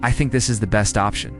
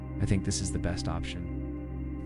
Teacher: When your voice goes downward, it sounds like a confident, definitive statement. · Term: downward inflection